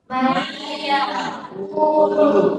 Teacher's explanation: nun mati ini dibacanya harus dimasukkan ke dalam iya. Dalam artian nun matinya tidak dianggap karena dimasukkan ke dalam huruf iya. Dan harus, kalau ini harus dibacanya disertai dengan gunnah atau berdengung. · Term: idgham